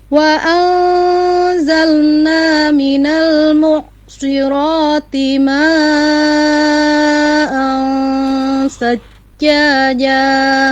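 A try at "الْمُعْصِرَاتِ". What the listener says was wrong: Ya, ain sukunnya kurang dialirkan dikit. Ya, nya itu ngalir. Mu'sirati tidak cukup mu'sirati mu'sirati, jangan buru-buru di situnya ya.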